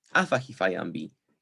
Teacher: lexically listed word initial stress is retained stress is not reassigned to the last syllable of the verbal